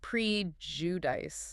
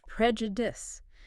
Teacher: The stress is on the first syllable, and that I at the end is a short I sound · So they say something like prejudice. Right, prejudice with a long I sound. But that's not quite right.